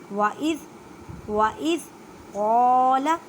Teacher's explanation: قاف کو ادا کرتے وقت خیال رکھیں کہ یہ کاف کی آواز نہ آئے، قاف حروف مستعلیہ موٹے حروف میں سے ہے، لام کو بالکل نہیں کھینچنا کیونکہ لام کے پر حرکت ہے۔